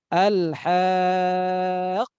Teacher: qafnya itu perlu penekanan karena menandakan ada dua perjumpaan di sana